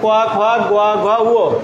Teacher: এদের উচ্চারণ স্থান কণ্ঠ, কণ্ঠ বা জিহ্বামূল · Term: জিহ্বামূলীয় ধ্বনি